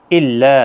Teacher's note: لام کے اوپر کھڑی زبر ہے، 1 الف کی مقدار کے برابر کھینچ کر پڑھیں گے، اور لام کو سختی کے ساتھ بھی پڑھا جائے گا، تولا تشدید والا حرف ہے، وَكَفَرَ را جب ساکن ہوگا تو پچھلے حرف کے اوپر زبر ہے، پر پڑھا جائے گا، ساکن کی حالت میں بھی پر پڑھا جائے گا، ملانے کی حالت میں بھی پر پڑھا جائے گا اس زبر کی وجہ سے۔